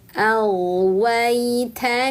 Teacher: sempurnakan wa lalu naikkan tengah lidah untuk ya sukun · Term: harfun lin